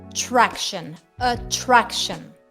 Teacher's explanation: La T aquí se convierte en CH.